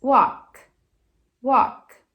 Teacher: se o verbo termina com K, o K não usa as cordas vocais. Walk, walk, não mexe. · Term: unvoiced sound